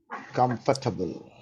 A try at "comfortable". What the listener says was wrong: Comfortable. Do you remember, I always say it's not 4 syllables, it's 3. That's how we pronounce it.